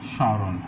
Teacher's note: অর্থাৎ শব্দের শুরুতে যদি মফলা থাকে তা উচ্চারিত হবে না, এবং যে ধ্বনিটির সাথে মফলা যুক্ত হবে সেখানকার স্বরধ্বনিটি একটু নাসিক উচ্চারিত হবে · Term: নাসিক উচ্চারণ